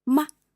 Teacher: And the neutral tone is very short and light.